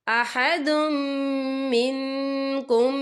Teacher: یا دیکھیں احدم، دال کے پر تنوین ہے، تنوین کے بعد جو ہے میم آ رہا ہے، اور میم جو ہے حروف یرملون میں سے ہے، تو یہاں پر ادغام ہوگا، تو ہم اسے غنّے کے ساتھ پڑھیں گے۔